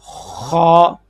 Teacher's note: چلیں توجہ کیجئے گا، مجھے امید ہے کہ انشاءاللہ آپ کو سمجھ آ گئی ہوگی کہ خا کا جو مخرج ہے گلے کا سب سے اوپر والا حصہ